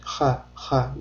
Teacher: Ha harfida tovush bo'g'zimizning o'rtasida hosil bo'ladi hamda biz tomog'imizdan og'zimizdan chiqqan havo bo'g'zimizdan yurganini sezishimiz kerak.